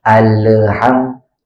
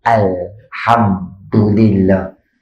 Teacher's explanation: al tu jangan ada Qalqalah sebab lam bukan huruf Qalqalah